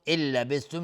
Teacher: نون ساکن بعدش لام ادغام بدون غنه